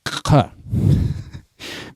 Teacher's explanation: Big Q is probably the rarest sound in Klingon, the uvular affricate ka